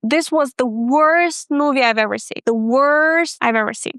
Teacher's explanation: the last part of a sentence was pronounced really fast. Why? Because I stress the word worst. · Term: stressed the word worst